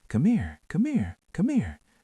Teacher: Said softly, slightly higher than your normal voice.